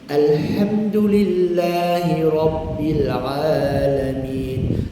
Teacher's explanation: lam tu sukun dia baca izhar baca ringan tanpa ditahan lama tanpa diberatkan